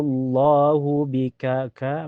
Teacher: karena ada alif sebelumnya harokat fathah di kaf, dibaca panjang dua harokat